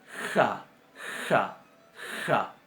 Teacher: la kaf va a sonar como nuestra J, pronunciada un poquito más adelante en la garganta, no pronunciada atrás como pronunciamos estas, sino que va a sonar ja, ja, ja.